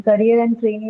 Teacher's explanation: ria in career and e in trainee are the syllables that are stressed